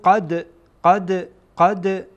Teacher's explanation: این دال در اینجا قلقله میشه